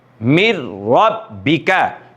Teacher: نون ساکن کے بعد حروف یرملون میں سے را آ رہی ہے تو ادغام یرملون بلا غنہ ہو رہا ہے